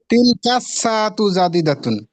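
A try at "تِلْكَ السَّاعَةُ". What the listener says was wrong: মাশাআল্লাহ ভাইজান আর তিলকা সাআতু হবে তিলকা সাআতু না তিলকাস কাফ দিয়ে সরাসরি সিনকে ধরবে তিলকাস সাআতু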